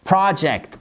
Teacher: Accent tonique ici sur la première partie du mot.